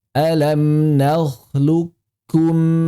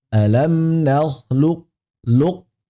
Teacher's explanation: Nah, ke pangkal lidahnya itu dinaikkan dulu. Ada tafkhimnya sedikit. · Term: idgham naqis